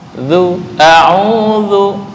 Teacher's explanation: Digigit ujung lidah dengan ujung gigi atas. Zu. Ketika bergeser dikit pasti berubah. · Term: zal